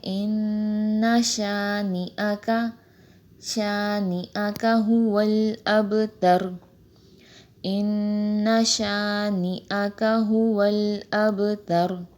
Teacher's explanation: شانیہ کا پڑھتے ہیں اکثر لوگ، تو یہ شانیہ کا نہیں ہے، شانئہ کا، حمزہ پہ زبر ہے